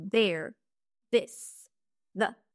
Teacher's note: le TH sonore les cordes vibrent et le son ressemble à un D ou à un V